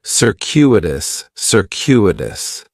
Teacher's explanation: In the first syllable, that C is going to have more of an S sound, circuitous. The stress is going to be on that second syllable, and that CU is kind of like you're saying the letter Q, circuitous, circuitous.